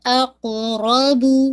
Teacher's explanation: قاف پہ قلقلہ گین، را ہیوی